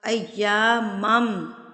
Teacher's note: ایامم، میم مشدد، میم مشدد پھر آپ نے غنہ کرنا ہوتا ہے،